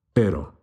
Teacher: siento again here we have a light single flipped r pero don't roll the r and say perro because that means a dog